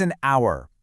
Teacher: It's an hour because the h is silent. The first sound you actually hear is a vowel.